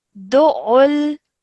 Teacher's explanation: You're joining the dal to the ain with force because it has a shadda on it, and then you're joining the lam onto it as well, okay?